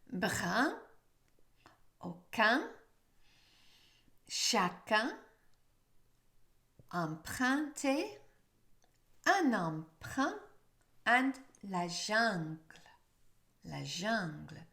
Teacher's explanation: Notice it's the vowel sound that's important and the back part of your tongue that's doing the stopping for the un.